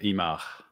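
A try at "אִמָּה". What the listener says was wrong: Just ima, yeah. You don't need to pronounce the breath. H too much. Yeah.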